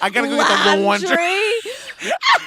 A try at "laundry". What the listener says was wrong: You're saying it like it's LAAHHHN. And I am admittedly saying it like it's LAAWWW.